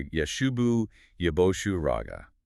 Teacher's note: the stress hits early, avoiding a heavy drawn out ending on the last syllable. >> Keel describes this specific accentuation as creating a tripping measure.